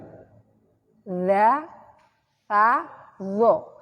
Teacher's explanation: Ujung gigi atas dengan ujung lidah. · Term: lasawiyah